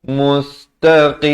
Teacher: Qaf ni makhrajnya di pangkal lidah.